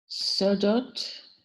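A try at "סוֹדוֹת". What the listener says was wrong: Yep.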